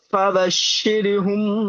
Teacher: র সাকিনের পূর্বে জের এসছে, র বারিক হবে। জি। হার উপরে পেশ এসছে, পেশটি আছে হারাকাত, হারাকাতে পড়াকে তাড়াতাড়ি পড়তে হয়, টান দেওয়া নিষেধ।